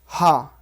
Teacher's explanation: कंठ से हा का उच्चारण स्थान होता है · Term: विसर्ग